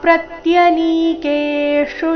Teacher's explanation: ಪ್ರತ್ಯ ಪ್ರ ಮೇಲೆ ಆಘಾತ, ನೀ ಕೆ ಎರಡು ಅಕ್ಷರ ದೀರ್ಘ, ಮುಂದಿನ ಶು ರಸ್ವ